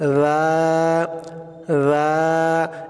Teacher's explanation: তারপর রাল আলিফ জবর, রা রা, এই রালের আওয়াজটাও ওই উপরে সা পড়েছে আমরা, ওই সার মতো আওয়াজটা হবে, একদম পাতলা হবে, জিব্বার মাথা উপরের দাঁতের মাথার সাথে লাগবে